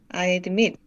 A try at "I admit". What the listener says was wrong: 좋은데 D 발음 중간에 D 발음 안 하기. I admit. I admit.